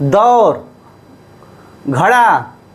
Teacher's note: यानी, हमारी जीभ ऊपर की ओर हिलती है। इसलिए , जीभ और तालू का उपयोग किया जाता है। किस लिए? फ्लैप व्यंजनों का उच्चारण।